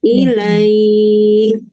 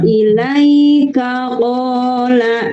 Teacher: Tapi kalau kita membacanya lanjut la itu pendek